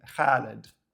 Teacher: Kha is a guttural sound made by constricting the throat and expelling air.